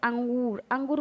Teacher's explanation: यह स्वर के बाद आने वाला व्यंजन है जिसकी ध्वनि नाक से निकलती है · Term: अनुस्वार